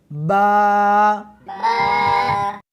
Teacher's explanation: اس حرف کو دونوں ہونٹوں کے ساتھ ملا کر پڑھیں گے